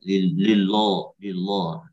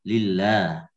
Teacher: Lam pada kata lillah jangan sampai ditebalkan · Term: tarkik